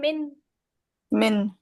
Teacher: नून पे जबान को तालू से चिपका के तसादुम ही तो कर रही हैं। उसके मखरज पे ये दोनों चीजें, जबान और तालू मिलकर तसादुम करे ना, मिन।